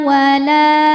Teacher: la mad tabi'i dhahiri karena ada alif didahului fathah, maka huruf lam panjang 2 harokat.